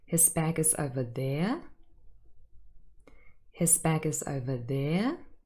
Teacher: I used a full rising intonation, and hopefully you picked up on the message here that I showed surprise by this fact.